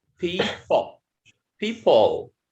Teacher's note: The first is stressed, and the last one unstressed.